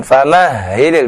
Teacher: Famahil dengan ha ya yang dari pangkal tenggorokan. Famahhil bukan dari tengah.